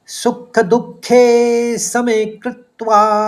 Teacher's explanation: पहले चरण में 3 शब्द हैं, सुख दुखे समे और कृत्वा। कौ के ऊपर आघात है तो पहले आप कृत बोलेंगे, फिर त्वा बोल देंगे। तो इस तरह से उच्चारित करेंगे, सुख दुखे समे कृत्वा।